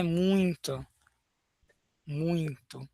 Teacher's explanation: esse som de nasal, ele pode surgir em palavras que não têm a marcação de nasal